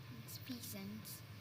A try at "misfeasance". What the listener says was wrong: I'm not hearing the ending of your word, so can you pronounce it again?